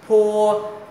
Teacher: môi khép lại Ngắm môi lại có hơi bịch ra